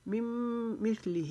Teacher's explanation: لہم مم مثلہ، لی کو لمبا نہیں کریں گے، ہا کے نیچے کھڑا زیر ہے، اس کو ایک الف کے جتنا لمبا کھینچیں گے۔